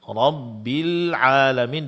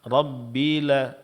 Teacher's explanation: Di sini lam sukun. Jelaskan sukunnya. Jangan sampai terkalqalakan. Jangan dibaca rabbil alamin.